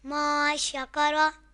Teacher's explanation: یہاں نون ساکن کے بعد حروف اخفا میں سے شین آ رہا ہے تو گنہ کر کے پڑھیں گے.